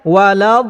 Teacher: apa yang saya baca iaitu bacaan yang terus ya tanpa menyebut sifat huruf dad iaitu sifat memanjang yang dinyatakan dalam ilmu tajwidnya iaitu sifat istitalah